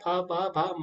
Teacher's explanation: इसी प्रकार जो पा, फा, बा, भा, मा है, ये जो वर्ण निकलते हैं ये आपके औष्ठ्य है। औष्ठ्य यानी होठों को बंद करना पड़ेगा इनको बोलने के लिए, तभी इनका शुद्ध उच्चारण होगा।